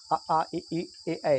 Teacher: जिन स्वरों को बोलते समय ओंठ गोलाकार ना हो वृत्ताकार ना हो वो अवृतमुखी है